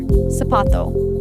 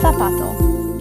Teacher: In Latin America, the letters Z and C, when they come before an E or an I, they just sound like an S. But in a lot of Spain, those same letters get a th sound.